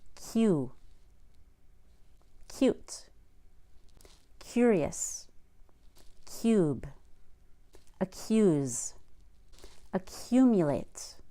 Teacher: After a K sound, often spelled with a C, we also put a Y before a long U.